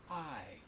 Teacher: in any way to make a vowel sound it's a diphthong it's a blend of vowel sounds so I is two sounds it starts with aa and ends with actually ends with E